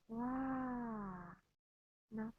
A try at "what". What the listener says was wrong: You're kind of ah. Uh. Go to the back and go down. Uh. You don't want this shape.